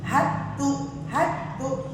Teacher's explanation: ini yang ada tasdid kan pertama ha kemudian ada tasdid kedua di ta. Jadi dalnya hilang ya. Heeh. Jadi langsung masuk ke tnya.